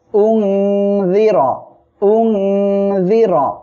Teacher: অক্ষর জাল আসছে এজন্য জাল জের র জবর র উনর উনর র অক্ষের উপরে জবর আসছে মোটা করে পড়বেন